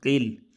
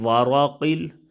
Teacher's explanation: اب موٹا قاف ہے حروف مستعلیہ میں سے ہے